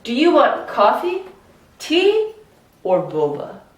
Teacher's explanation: It goes up, up, then down.